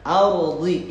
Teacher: Sifat istiqolah di dhad di bawah. Ardi istiqolah itu tebal, lebih naik si lidah ke langit-langit atas.